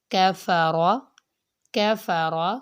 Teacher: کاف کی آواز باریک پڑھی جاتی ہے، باریک حروف میں شامل ہے